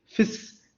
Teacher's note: The S sound will come, the sh sound will not come because of the gap in the teeth.